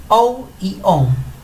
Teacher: se dice o sencillito y esta on cuando decimos la palabra on sentimos un poquito de vibración en la nariz